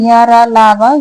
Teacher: अंतस्थ व्यंजन य, र, ल, व ये सभी सघोष और अल्पप्राण होते हैं।